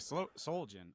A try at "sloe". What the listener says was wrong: SLOE. Slow. The L is first. SLOE. It's pronounced like SLOW.